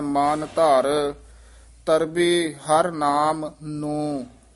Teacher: ਨਾਮ ਨੂੰ ਪਾਠ ਇਕੱਠਾ ਨਹੀਂ ਕਹਿ ਦੇਣਾ ਲਮਕਾ ਕੇ ਬੋਲਣਾ ਹੈ